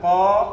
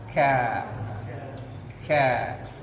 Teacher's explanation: Aqsal lisan. Qa untuk yang atas, yang bawah ka.